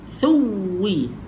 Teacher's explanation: Muncung mulut sebab waw makhrajnya di kawasan bibir, kena muncung. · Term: huruf wow